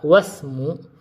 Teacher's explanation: Namun pada kata ismu yang kedua, wasmu, yaitu pada kata wasmul binti, kita membacanya dengan tidak menampakkan hamzah wasl